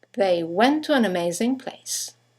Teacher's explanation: 2 words, one ending with a T, the next one starting with a T, they run into each other · you have the semi-vowel W that connects the vowels to and an to each other.